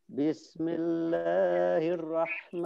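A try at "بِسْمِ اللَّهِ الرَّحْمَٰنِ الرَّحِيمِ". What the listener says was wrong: Kepanjangan, hati-hati.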